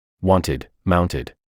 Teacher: there is an audible vowel when the past tense inflection is being pronounced